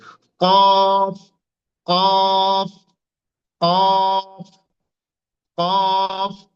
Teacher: জিহ্বার গোড়াটা অবস্থা সেই অবস্থান থেকে উপরে তালুর সঙ্গে লাগাতে হবে জিহ্বার গোড়া এবং তার উপরের তালুর সাথে লাগিয়ে একটা অক্ষর উচ্চারণ হয়